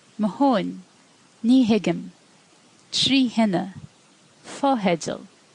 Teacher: When you apply shevu to the consonant T, you also get an H, whether in broad or slender context.